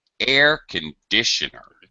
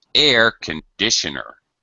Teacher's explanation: we pronounce the word differently if it's part of a set phrase the primary stress becomes low pitched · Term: secondary stress